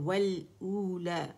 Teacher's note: اچھا پھر روتا، را موٹا تا باریک ہے، والاولا، ٹھیک ہے، یہ الاولا ہے لیکن روانی میں پڑھیں تو والاولا، اور مد اصلی ہے او، ٹھیک ہے، اور لا کی میں آواز 2 کاؤنٹ اوپر جائے گی، او کے لیے گول ہو جائے گی، جہاں واو آئے گا وہاں گولائی ہوگی لپس کی